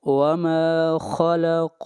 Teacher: ما کو بھی لمبا کریں گے ایک الف کے برابر، یہ مد اصلی ہے